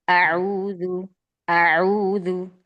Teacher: Sempurnakan satu harokat fathahnya hamzah terbuka ya maftuh, kemudian baru ke ain.